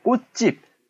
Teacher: 디귿과 지읒이 만났잖아요. 이러면 뒤에 있던 예사 소리가 이제 된소리로 바뀌는 현상을 된소리 대기라고 얘기한다